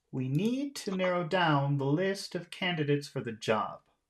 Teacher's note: we'll make all of our important sounds into a high tone and then when we get to the end we'll make that a lower tone